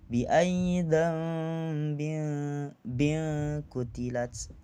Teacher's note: kasrotain ketemu dengan qaf, yang mana hukum bacaannya di sini adalah ikhfa, yakni samar.